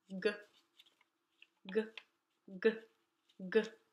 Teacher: and touches the top good good good good just like that the tip of your tongue did you see that it doesn't go anywhere it stays down the back part goes up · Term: gut sound